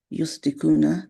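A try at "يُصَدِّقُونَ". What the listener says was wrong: Yusaddikuna. You have double sound of dal.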